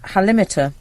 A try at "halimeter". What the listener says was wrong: Would you pronounce it the halimeter? I would have gone for the halimeter because of halitosis. No, but you're emphasising limits.